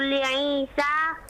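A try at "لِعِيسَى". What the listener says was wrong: Ainnya bagus sekali tadi. Li Isa.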